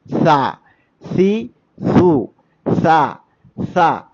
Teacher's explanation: നമ്മുടെ നാവിൻ്റെ അറ്റത്തിൻ്റെ തല അഥവാ മേൽഭാഗം നമ്മുടെ മുൻപല്ലുകളുടെ താഴെയറ്റവുമായി ചേർത്തുകൊണ്ടാണ് നമ്മൾ സാഇനെ ഉച്ചരിക്കേണ്ടത്. ആ ഉച്ചരിക്കുന്ന സമയത്ത് നാവിൻ്റെ തലപ്പ് അല്പം കുറച്ച് പുറത്തായിരിക്കും.